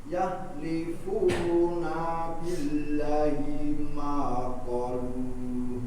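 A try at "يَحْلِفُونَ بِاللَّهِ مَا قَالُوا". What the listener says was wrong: Nah, billah panjangkan, qa-nya panjangkan.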